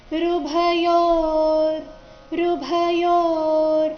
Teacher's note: ಯೋ ಆದ ನಂತರ ಅರ್ಧ ರಕಾರ ಬರಬೇಕು